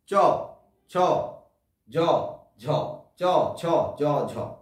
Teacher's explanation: তো যে ধ্বনিগুলো উচ্চারণ করার সময় শ্বাস বায়ুর বহির্গমনের পথ প্রথমে রুদ্ধ হয়ে যায়, তারপরে সামান্য মুক্ত হয়, আর তারপরে ঘর্ষণের মতো হয়ে শ্বাস বায়ু বেরিয়ে আসে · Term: ঘৃষ্ট ধ্বনি